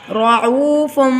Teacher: تنوین کے بعد با آ گیا، یہاں پر اقلاب ہوگا، یعنی کہ ہم با کو میم میں بدل کر ادا کریں گے۔